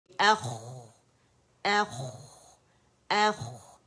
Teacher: خوا میں استعالہ ہے، زبان جو ہے ہماری جو جڑ ہے نرم تالو کو لگتی ہے اور موٹا لیٹر ہے، آواز چلے گی اخ اخ اخ.